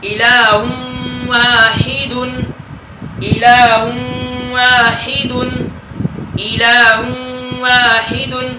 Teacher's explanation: نون تنوین کے بعد واو آیا ہے، ادھر ہم ادغام مع الغنہ کر کے پڑھیں گے